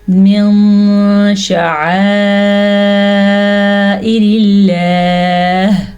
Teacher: دونوں ہی صورتوں میں ہم نون کی آواز کو چھپا دیں گے۔ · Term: اخفا